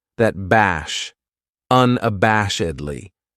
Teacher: This adverb has five syllables and the stress is on that third syllable that bash